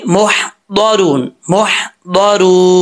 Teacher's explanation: زبان کی left side جو مسوڑوں کے ساتھ جو ہے وہ مل رہی ہیں، داڑھوں کی جو ہے جڑیں ہیں ان کے ساتھ یہ ٹچ کرے گی زبان، تو یہ ضاد پڑھا جائے گا، اور اس کے لیے لازمی ہے جب تک زبان اوپر کی طرف نہیں اٹھے گی اس وقت تک ضاد نہیں پڑھا جائے گا، یہ لازمی ذہن میں رکھیے گا، ٹھیک ہے؟